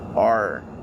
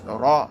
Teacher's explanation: In Arabic, it's ra. The tongue wiggles. The tongue vibrates. But you have to abstain from doing it too much when it has a shadda. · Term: roll the ra